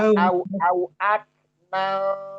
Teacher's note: kafnya jangan sampai mantul ya. itu bukan qof enggak qalqalah